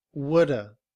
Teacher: Would stays the same, but have is reduced to the schwa and sounds like woulda. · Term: reduced form